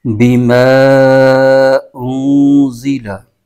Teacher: हरफे मद्दा के बाद हमजा दूसरे कलमे में हो तो मद्दे मुफ होगी तो इसको दो अढ़ाई अलिफ की मिक दार खींच के पढ़ेंगे